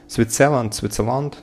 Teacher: The first syllable is stressed. Первый слог на, то есть под ударением.